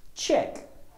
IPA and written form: tʆek (check)